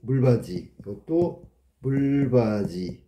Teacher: 디귿이 이하고 만나서 지읒으로 바뀌었네. 구개음화 똑같아.